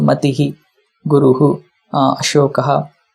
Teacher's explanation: Mati ends with Ikara, and Visarga will repeat again previous vowel Ikara.